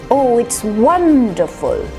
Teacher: the emphasis is on the first syllable one the full the voice comes down there astonishing and smile